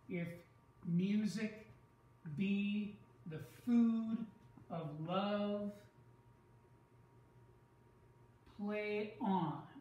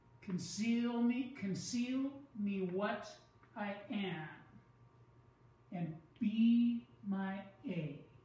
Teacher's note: do you see the pattern it's unstressed stressed